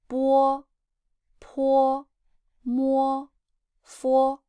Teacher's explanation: It is b, p, m, f. But now I just want you to add w sound after each of them.